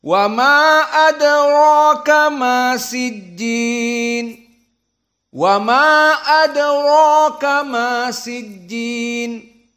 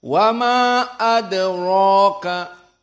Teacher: fathah dari adraka, dan di sini adra dalam keadaan mufakhamah. Dibaca dalam keadaan kental